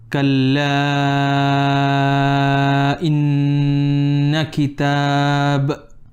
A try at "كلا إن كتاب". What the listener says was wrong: Now your kaf, make a bit of hams. Kalla again.